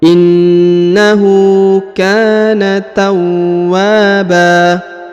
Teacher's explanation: Huruf wa ditahan dan ditekan lalu dipanjangkan 2 harokat karena di depannya terdapat alif.